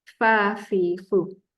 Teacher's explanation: gigi atas tu mesti menyentuh bibir bawah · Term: huruf fa